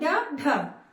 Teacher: जो जीभ है ऊपर उठेगा, तालू को छूते हुए झटके से पीछे की ओर आती है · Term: उच्छित